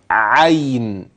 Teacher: يا عين ساكنه لينه وليست مديه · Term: ياء عين لينه